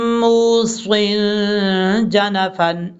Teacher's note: صاد کے نیچے دو زیر ہیں، یہاں پہ دو زیر کی تنوین کے بعد جیم آ رہا ہے حروف اخفا میں سے، یہاں اس لیے یہاں پر نون تنوین کا اخفا کریں گے